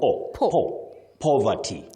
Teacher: You say po. With that low back sound o. Po. Poverty.